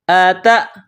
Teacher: یہ نقطوں والی تا ہے، اس کو باریک کرنا ہے۔ تا کو حمزہ کے ساتھ پلس کرنا ہے، ملانا ہے۔